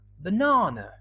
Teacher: the stresses in the second syllable but the first and the last one they are weak